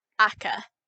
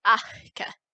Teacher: when you're pronouncing the sound before you get to actually blocking off all the air in your mouth there's a little puff of air that comes out so it's not akka it's ache so ake this path of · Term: pre-aspiration, pre-aspirated